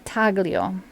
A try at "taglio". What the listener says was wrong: No, it's a silent G.